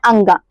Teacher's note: हम लोग कंठ से भी कर रहे हैं दोस्तों, और नाक से भी मतलब टच हो रहा है अंगा, ठीक है। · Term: कंठ नासिका